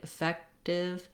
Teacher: you might hear it sounding a little more like a D than a T. We use a flap here